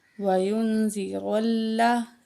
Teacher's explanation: وَيُن، زال زیر زی، زال کو نرمی سے پڑھیں گے، را کے اوپر زبر ہے، موٹا کر کے پڑھیں گے، اور را کو لام سے ملائیں گے